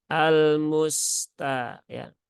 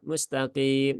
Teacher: huruf sin itu dia punya sifat rokhawah dan juga punya sifat sofir ya atau mendesis